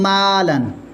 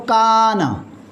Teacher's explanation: अब अलिफ से पहले जो मीम है ये सिंपल आम पढ़ा जाता है, मीम तो बारीक पढ़ा जाएगा, लिहाजा साथ अलिफ भी बारीक पढ़ा जाता है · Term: अलिफ की तरक़ीक़